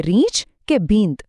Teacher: તીવ્ર ઉચ્ચાર વખતે એની આગળનો સ્વર હંમેશા હસ્વ થઈ જાય પણ અમુક અનુસ્વાર કોમળ હોય છે ખાલી નાકમાંથી હળવો અવાજ આવે